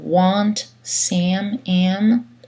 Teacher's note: L'anglais utilise des voyelles nasales avant les consonnes nasales prononcées